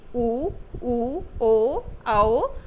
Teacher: व्रतमुखी जो होते हैं उनके उच्चारण में ओंठ जो होते हैं वह गोलाकार हो जाते हैं।